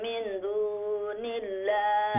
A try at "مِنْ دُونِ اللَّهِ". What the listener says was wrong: یہاں اخفا کریں نا، من دون اللہ، ولكن كونوا اخفا کریں، جلدی نہ پڑھیں.